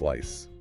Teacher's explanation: the tip of your tongue actually touches that ridge right behind your front teeth